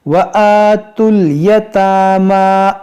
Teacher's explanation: اب یہاں پر دیکھیں تا کو لام سے ملا دیں گے، اس واو کو یہ سب نہیں پڑھیں گے